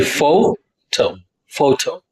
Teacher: the pitch goes higher when you say photo